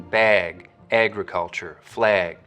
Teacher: you'll also start to get raising and tensing in the trap vowel when it comes right before a gu sound